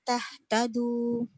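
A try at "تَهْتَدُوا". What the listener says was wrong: Jangan kuat sangat nanti jadi ha. Tahtadu, jangan tahtadu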